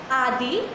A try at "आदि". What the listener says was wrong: आदि दीर्घ नहीं है, रसोई रहेगा। आदि शब्द का आदि आदि नहीं, आदि ही नहीं, रसोई रहना, उसको दीर्घ मत बोले।